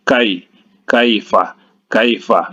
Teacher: Kai ini ada huruf ya yang sukun, ya, yang sukun, maka dihukumkan ini madlin, ya. Cara membacanya dilemaskan saja.